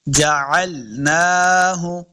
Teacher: عین کو تلفظ کے ساتھ پڑھنا ہے، عین زبر لام ال نہیں کرنا، یعنی حمزہ نہیں پڑھیں گے۔ عین کو الگ سے ایک مخرج ہے، حلق کے نچلے درمیان والے حصے سے عین کا مخرج ادا ہوتا ہے۔